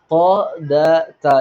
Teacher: വ്യത്യാസമുണ്ട് നമുക്ക് അക്ഷരങ്ങൾ ആണല്ലോ മെയിൻ ആയിട്ട് പഠിക്കേണ്ടത് അപ്പൊ ത് എന്നുള്ള അക്ഷരം ഉച്ചരിക്കുമ്പോൾ നാവിന്റെ തല മേലെ മുൻപല്ലിന്റെ മുരട്ടുമേൽ തന്നെ തട്ടണം ത് ദ ത ഈ മൂന്ന് അക്ഷരം ഒരേ സ്ഥലത്ത് നിന്ന് തന്നെയാണ് പുറപ്പെടുന്നത്